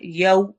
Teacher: यौ पढ़ना है, होंठ पूरे प्रॉपर गोल होंगे